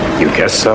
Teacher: fall rise tone often shows contrast or doubt